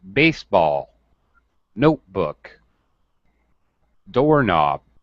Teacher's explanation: it always gets pronounced the same way with a high and then low stress